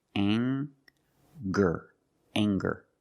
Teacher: We have the nasal sound plus the hard g, the g sound together.